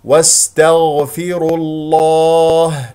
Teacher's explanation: ولام اسم الجلال الله مفخم لان قبله مضموم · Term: تفخيم اسم الجلال